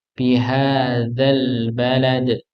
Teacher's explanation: ujung lidah bertemu dengan ujung gigi seri atas